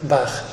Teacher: Bach, temos un A, é un A aberto, igual que o noso, non há problema.